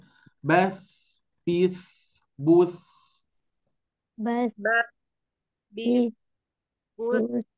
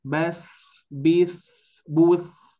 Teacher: huruf-huruf yang rohwah ini yang mempunyai sifat di awal maka dialirkan dulu baru mengucapkan bunyi fathahnya